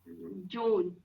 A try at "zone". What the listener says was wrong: No, not ja. It is z. Yeah, zone. Zone.